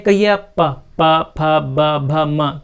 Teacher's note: ओष्ठ पर, है ना, ओठों पर रोका जाता है, इसलिए इनको ओष्ठ ध्वनियाँ कहा जाता है